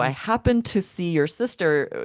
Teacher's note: You don't hear that d at all and it's kind of hard when you're speaking to tell that it's in past tense. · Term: elision